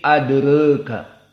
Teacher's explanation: Hamzah dibaca dalam keadaan al-imalah al-kubra jadi adreka, dan Warsh akan dibaca dalam keadaan taklil jadi adreka